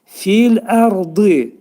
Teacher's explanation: Ərdi dedikdə ra hərfi demək təxfim oxunacaq, dolu oxunacaq.